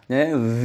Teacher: নিচের ঠোঁটের এর উপরের দাঁতের আগার সাথে লাগাইয়া উচ্চারণ করে থাকেন